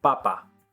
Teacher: the Sounds in English tend to blow out more air but in Spanish they don't